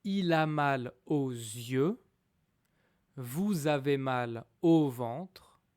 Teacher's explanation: this expression, first of all, it has a consonant L, mal, L, always followed by a vowel. So we will link them together.